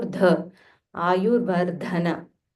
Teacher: So this is Mahaprana Dha. So you'll have to aspirate a little more